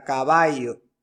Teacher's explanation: el yeísmo consiste en pronunciar la doble l como y